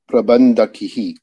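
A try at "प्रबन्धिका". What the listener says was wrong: There is no visarga. And it is Prabandhika. So Prabandhakaha and Prabandhika.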